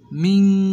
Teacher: বলেন মিন, একবার গুণ করতে হবে